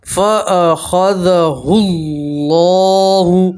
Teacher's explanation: فاخذه، ہا کو سیدھا دوسرے نمبر پر جو لام ہے اس سے ملائیں گے، ٹھیک ہے، یہ الف اور لام نہیں پڑھیں گے، اور اللہ کے لام سے پہلے پیش ہے تو اللہ کا لام موٹا پڑھیں گے